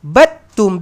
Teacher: Cara bacanya adalah dengan kita membuang huruf dal ni menggugurkan ataupun kita silentkan. Kita silentkan huruf dal. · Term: Idgham mutajanisain